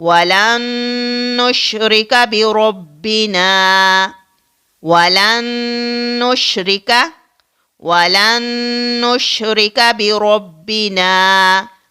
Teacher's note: تو اب آپ یہاں پر دیکھیے کہ نون ساکن کے بعد نون مشدد آ رہا ہے تو یہاں پر ادغام ہوگا، یعنی غنہ کے ساتھ پڑھا جائے گا